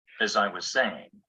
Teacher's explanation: the weak pronunciation of as can sound the same as the weak pronunciation of is or has